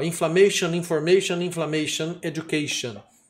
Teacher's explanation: E quando é terminada em T-I-O-N, que é o nosso shan em inglês, geralmente a tônica é uma sílaba antes, education. O A vai ter som de E, né? Se ele for imediatamente antes do shan. E é a sílaba tônica